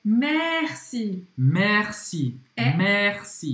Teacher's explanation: Mas a gente não fala merci fechado, assim como se fosse com acento circunflexo. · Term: E aberto